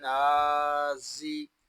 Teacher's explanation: زا کو ادا کرتے وقت سیٹی کی آواز آئے گی کیونکہ زا حروف صفیریہ میں سے ہے اور حروف صفیریہ کو سیٹی کے ساتھ ادا کرتے ہیں۔